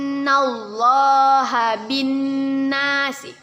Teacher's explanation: nun bertasydid kita gunnahkan, kita dengungkan 2 harokat.